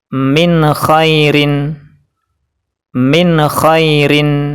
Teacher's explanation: ro yang berharakat kasrhain yang berwarna kuning itu dibaca tipis cukup pakai lidah saja dan bibir tidak terangkat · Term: tarqik atau tipis